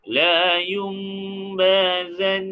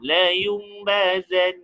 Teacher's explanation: nun sakinah ditukar kepada mim. Sebab tu kita tak dengar huruf nun dah, kita dengar huruf mim.